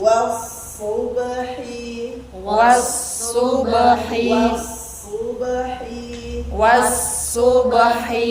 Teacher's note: sod bukan huruf monyong, tapi kita monyongin karena Domah